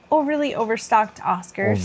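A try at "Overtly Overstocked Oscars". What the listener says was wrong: Overtly. That's a T in there.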